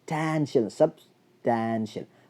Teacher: അപ്പോൾ ടാൻ എന്നുള്ളിടത്ത് സ്ട്രെസ് കൊടുക്കണം